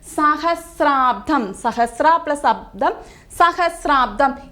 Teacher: അ പ്ലസ് അ ആണ് കൂടിച്ചേർന്ന് മറ്റൊരു വർണ്ണമായി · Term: ദീർഘസന്ധി